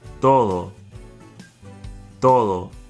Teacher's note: Both the T and the D are dental consonants pronounced with the tongue behind the front top two teeth.